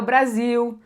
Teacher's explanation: Se o L vem no final, ele vai ter som de U. · Que acontece pra gente brasileiro é que o L tem som de U muitas vezes